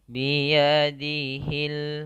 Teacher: Kalau di sini tadi ini nama hukum bacaannya alif lam syamsiyah, yang mana alif dan lamnya tidak dibaca, langsung ke lam yang bertasydid. Kemudian di sini lamnya harus dibaca dengan jelas.